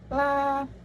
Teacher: konsonan sampingan atau lateral, apikoalveolar, dan bersuara